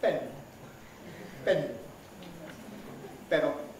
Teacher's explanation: still apart so the air expelled by the lungs surges out in spanish immediately you separate the lips the vocal folds start vibrating